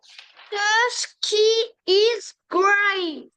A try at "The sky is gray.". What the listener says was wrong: Bien, donc the sky. C'est pas ski, c'est sky. The sky, the sky is gray. Écoute-moi, regarde, pour le ciel, regarde, toi tu lis ski, donc effectivement ski c'est en français, mais en anglais tu vas dire I, the sky. The sky is gray.